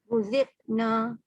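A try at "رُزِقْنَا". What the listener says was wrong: Qalqalah tu tak jadi. Dia bila sukun je sayang. Bila dia berbaris tak ada sifat segala sifat ya. Sofir ke hamas ke kokolah ke bila dia huruf itu tengah berbaris, sifat itu tak lahir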